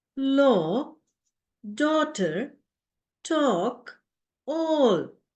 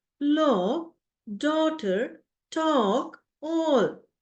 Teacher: now my lips are more rounded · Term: long vowel